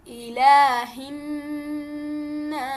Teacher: اس میں ایک اور چیز کا خیال رکھنا ہے کہ جو ہا کا مخرج ہے یا ہا کے مخرج کو بڑے سافٹ طریقے سے پڑھنا ہے، حلق کے نچلے حصے سے